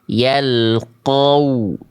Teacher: Tempat keluar huruf wau atau makharijul huruf wau itu dilafalkan dengan kedua bibir ya yang posisinya maju seperti pengucapan huruf U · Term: makhraj huruf wau